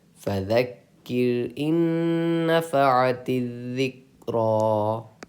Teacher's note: یہاں را ساکنہ سے پہلے زیر ہے، اس لیے ہم را کو باریک پڑھیں گے